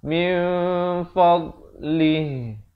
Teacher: Bunyinya samar di antara bunyi nun dan fa. Di sini hukum ikhfa hakiki.